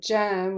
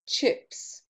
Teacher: A very interesting one here, which doesn't exist in some languages, is the j in jam, which is the voiced consonant for the ch sound, as in chips